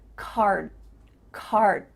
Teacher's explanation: your mouth is making the shape of that d sound but it's not making the vibrations happening you're not actually making a d sound but your mouth is · d sound but your mouth is making that shape card card my tongue is flat against the roof of my mouth to make the d but it's not coming out